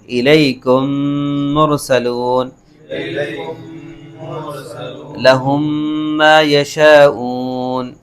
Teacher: یہاں میم ساکن کے بعد دوسرا میم آ رہا ہے، یہاں پر ادغام ہوگا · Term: ادغام شفوی